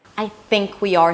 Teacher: Think is stress. It's a little longer. I is a bit more reduced.